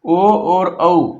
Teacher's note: ओ और औ इन दोनों को कहां से बोलते हैं? कंठोष्ठ से। कंठ और ओष्ठ से बोले जाते हैं।